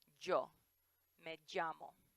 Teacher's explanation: So for example, most places they say it like ya, like me llamo and yo. In some places, like parts of Mexico and Spain, it sounds a little bit more like an English J.